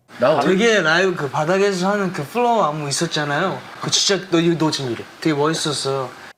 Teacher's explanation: it's almost like he's pronouncing his consonants after he's already started to pronounce his vowels so his vowels all kind of sound like they're blending together